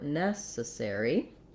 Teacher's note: we want to be long short short short